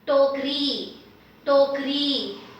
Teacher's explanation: Here I have the retroflex T. Retroflex T meaning your tongue is inside for this.